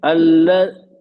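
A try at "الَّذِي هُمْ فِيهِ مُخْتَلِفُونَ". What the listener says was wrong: ये आराम से पढ़ना, आप यहाँ सुकून और तस्दीद पे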